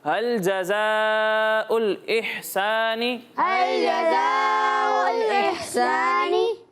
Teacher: हा साकिन है लेकिन यहाँ पर झटका नहीं देना